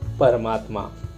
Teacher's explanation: परम शब्द में आखिरी का वर्ण अ और आत्मा शब्द के पहला वर्ण आ, इनके मेल से दीर्घ आ बन जाता है, इसलिए उसे हम स्वर संधि कहते हैं।